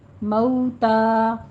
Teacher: آگے الموتى میں لام کے اوپر قلقلہ نہیں کرنا. مئو میں ہونٹوں کو گول کیجیے، نہ تمام گول کرتے ہوئے واولین ادا کرنی ہے اور تا کے اوپر فتح قائمہ ہے، منہ کھولیے.